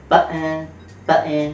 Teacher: A stop plosive completely stops the airflow and or explodes it like your typical P, T, or K. Also the glottal stop, which you can hear when British people say button.